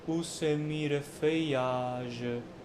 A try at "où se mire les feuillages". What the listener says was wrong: You're stopping a little bit before feuillage, and that's the punchline.